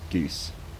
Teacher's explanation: fronting and kind of partial monophthongization of the goose vowel to something like goose is something I associate more with women as well. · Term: goose fronting